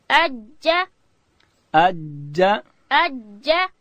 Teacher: جیم ادا کیږي د ژبې منځ به لوړ تالو ته ورړو.